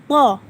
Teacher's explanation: To lidah kita di belakang gigi seri atas, to, namun dia sedikit bulat